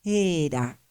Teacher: En esta otra, en cambio, aparece una eta vocálica. Sí, aquí tenemos escrito la misma diosa era, pero está escrita así, era, sin aspiración.